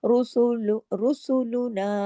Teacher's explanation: रुसुल रुसुलुना र मोटा सीन बारीक रुसुलना नून के साथ अलिफ है दो हरकात खींचेंगे बिल बनाती